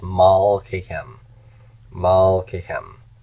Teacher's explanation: Kem is a heavy ending, so it takes the stress.